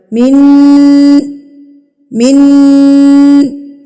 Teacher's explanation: غنہ کہتے ہیں ناک میں آواز کو لے کے جانا. آپ نے نون کی آواز کو ناک میں روک کے رکھنا ہے